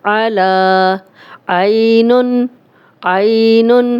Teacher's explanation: یا لین ہے، جزم والی یا، پیچھے زبر، تو یہ بالکل بھی لمبی نہیں کریں گے، نرمی سے پڑھیں گے۔ اور اگر عین ہے، آگے پوری آیت پڑھتے جائیں گے، لیکن اگر اس پہ سٹاپ کریں گے، ہم وقف کریں گے تو ہم اس پہ جزم لگائیں گے۔